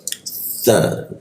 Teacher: Mi sa digigit. Mi sa, huruf sa ini karena lidahnya menempel gigi dia hembusannya agak terhambat. Sa, hampir tidak ada hembusan udara jadinya.